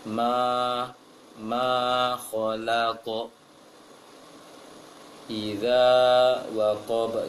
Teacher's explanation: Sempurnakan mengarah ke A bunyinya, jangan agak miring. Sepertinya kurang membuka, sedikit lagi pengucapan hurufnya. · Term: fathah yang tipis